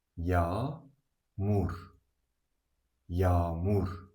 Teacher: the soft G lengthens the preceding vowel here